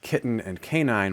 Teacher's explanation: Kitten and canine share a k, a n, and one level up, they share both syllable structure, 2 syllables, and stress pattern. The first syllable is stressed.